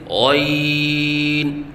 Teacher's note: غین کو ادنی حلق سے ادا کریں اور پر کر کے پڑھیں، کیونکہ یہ حروف مستعلیہ میں سے ہے اور حروف مستعلیہ کو پر پڑھا جاتا ہے، لہذا غین کو پر کر کے پڑھیں اور 3 الف کے برابر لمبا کر کے پڑھیں، جیسے غین۔